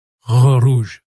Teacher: le R français ne se fait pas avec la langue mais avec le fond de la gorge. Si votre langue est troupe en avant dans la bouche, le son ne sortira pas bien.